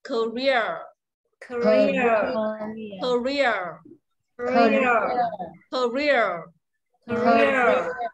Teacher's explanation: Âm ear là dài và nhận trọng âm nhá